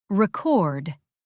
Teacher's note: Stress on which syllable? Answer: second syllable.